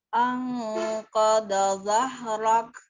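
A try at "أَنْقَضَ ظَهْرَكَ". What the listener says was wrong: Oke. Za. Bukan zah. Za. Zahrak.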